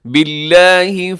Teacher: لفظ سے اللہ کو باریک رکھیے گا کیونکہ اس کے لام سے پہلے با کے نیچے زیر ہے